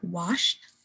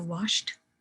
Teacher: that ED sounds turns into more of a T sound